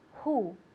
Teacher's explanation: come from the h sound comes from the throat all right it's a throat sound and it's unvoiced you do not use your vocal cords so you need to let air out